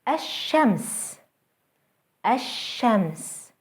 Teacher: starts with an al followed by a sun letter ashems ashams notice how the sun letter is doubled and how the l sound is lost